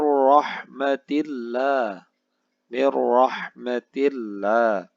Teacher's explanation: sukun bertemu dengan huruf ro porno hukum bacaannya adalah idgham bilagunnah suara nun sukun dimasukkan ke dalam huruf ro dan tidak boleh didengungkan